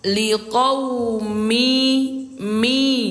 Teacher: Lebur itu suara tanwin ini kita leburkan ke huruf ya. Jadi bunyinya liquumi mi bukan lagi dibaca min